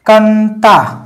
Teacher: गया क्योंकि अनुनासिक तो नहीं है ठीक है अनुस्वार है और अनुस्वार पुरी तरीके से नाक से ही बोला जाता है मुंह से नहीं होता है · अनुस्वार पूरी तरीके से नाक से ही बोला जाता है, मुंह से नहीं होता है। ठीक है, ये अनुस्वार है और अनुस्वार का जो उच्चारण होता है वो नाक से होता है, केवल और केवल नाक से।